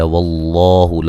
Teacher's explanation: لفظ اللہ کو یہاں موٹا ادا کریں گے، پہلے زبر ہے اور یہ بھی مد اصلی ہے۔